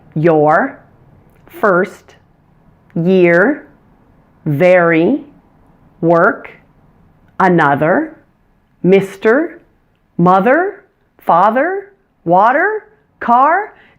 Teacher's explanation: your tongue does not touch any part of your mouth or your teeth it just floats freely in the middle of your mouth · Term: er sound